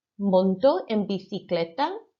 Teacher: when a C is followed by I, it's that th sound again, the TH sound